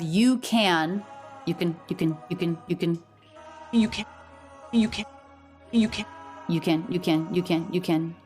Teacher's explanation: So we have K, schwa, and unstressed, said more quickly. It's the unstressed syllable here because she wants to stress not the negative.